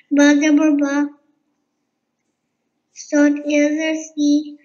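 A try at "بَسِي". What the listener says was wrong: No, sot yazar si. Stretch, long time. You have to do it longer. Ba jabar ba. Sot yazar si.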